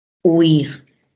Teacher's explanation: la palabra tiene 2 sílabas, ¿no? Y que el acento recae en la última sílaba. Huir.